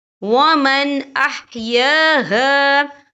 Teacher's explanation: ہم یہاں اظہار کریں گے، ہم اسے بنا غنے کے پڑھیں گے